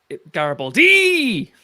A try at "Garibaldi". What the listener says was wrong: No, that's the fourth syllable.